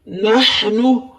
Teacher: ہا کی آواز حلق سے نکالیں